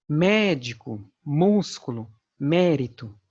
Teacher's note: dizemos que essa palavra é proparoxítona um exemplo médico músculo mérito em todas essas palavras a antepenúltima sílaba é a sílaba tônica é a sílaba pronunciada com maior intensidade